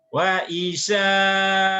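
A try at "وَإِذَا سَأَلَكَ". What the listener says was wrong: Jangan wa isa. Wa idza.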